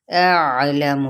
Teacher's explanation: अलम, पहले हमजा फिर आइन, मीम की पेश को लंबा नहीं करेंगे